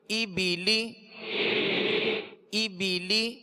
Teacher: زیر کو ادا کرتے ہوئے آواز کو نیچے مکمل گرا دیں گے تاکہ مجہول پیدا نہ ہو